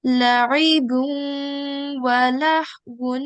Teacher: we need to remember to make a 2-second nasal sound while joining it to the waw mushaddat